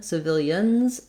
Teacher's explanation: If you're saying the plural of civilian, civilians, it's going to be a Z sound for that letter S in that word.